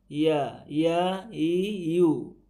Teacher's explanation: ইয়া অর্থাৎ এই মাঝের এখান থেকে লাগালে ইয়া উচ্চারণটা হয়ে যাবে। ইয়া, ইয়া উচ্চারণের সময় বাতাসটা বের হবে না শিনের মতো, কিন্তু ইয়া হরফটা একটু নরম উচ্চারণ হয়। · ইয়া, ইয়া জিম যেখান থেকে হয়, শিন যেখান থেকে হয়, একই স্থান থেকে হয় হচ্ছে এই ইয়াটা। ইয়া বলার সময় একটু হালকা ফাঁকা থাকে, এটা এখানে বেশি দেখা যাচ্ছে, কিন্তু হালকা মতনই কি ফাঁকা থাকে।